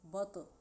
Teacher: تو پہ ہلکا سا ہلائیں گے کیونکہ یہ حروف قلقلہ میں سے ہے